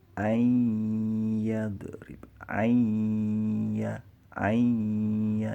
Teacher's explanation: Jadi nun sukun dimasukkan ke huruf ya. Nah, bunyinya seperti itu. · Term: idgham bi gunnah